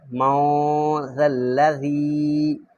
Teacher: کیونکہ یہاں پر اخفا ہو رہا ہے، جہاں بھی اخفا ہوتا ہے وہاں پر غنہ ہوتا ہے